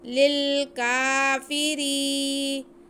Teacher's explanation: کاف باریک ہے، اس کو موٹا نہیں کرنا، بہت آرام سے ادا کرنا ہے۔ اس کے بعد فا کے نیچے زیر، را کے نیچے بھی زیر اور یا ساکن، یہ یا مدہ ہو گیا، اس کو ہم کھینچیں گے۔